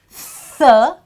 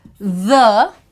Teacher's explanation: So T again has, T with H has three sound, th, where it is unvoiced, the, where it is voiced.